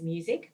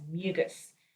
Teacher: the medial consonant z has been transposed to final position and devoiced, and the final consonant k has been transposed to medial position and voiced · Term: metathesis